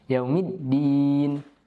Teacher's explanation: pada huruf dal kita perhatikan tasydidnya, yaumid ditahan